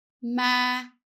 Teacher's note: with a down tone, the whole word needs to go down